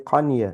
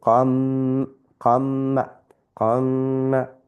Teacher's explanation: So those 4, when it comes after a noon sakin or a tanween, then we will incorporate it into the noon sakin and tanween. It will, the n sound falls away, and we're going to make some ghunna there.